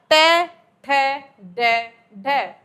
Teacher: ट बोलते में जीभ कहां जाती है एकदम से ऊपर जाती है ट ऊपर टच हो रही है ना तो जब आगे की